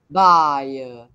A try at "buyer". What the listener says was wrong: But buy is like too long already. You have to make it shorter. Buyer, buyer.